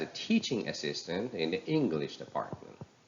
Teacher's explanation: the word teaching in the compound word teaching assistant and the word English in the compound word English Department they are higher in pitch and louder and longer in duration